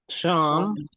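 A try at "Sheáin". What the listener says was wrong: not, the H makes the S disappear, Hyan. The name would be Sean, but she's addressing him, so it's lenited. Hyan, okay.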